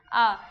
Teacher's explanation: दीर्घ आ जो है वो पश्च स्वर है